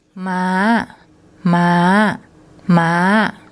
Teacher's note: And the tone rule for a low class consonant and the second tone mark is high.